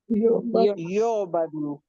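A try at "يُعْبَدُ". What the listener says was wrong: युअबदु, बा पे जबर लानी है।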